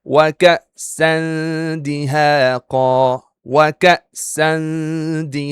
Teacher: Tanwin in this word and it's followed by dal here. Again, dal is an ikhfa letter, and it's a light letter, so we have to do ikhfa haqiqi with light ghunnah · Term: Ikhfaa Haqiqi